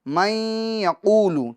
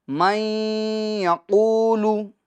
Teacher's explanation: نون ساکن کو یقولو کے یا میں ہم ملا دیں گے تو اب ہو جائے گا من یقولو. من یقولو گنہ کے ساتھ، من یقولو. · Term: ادغام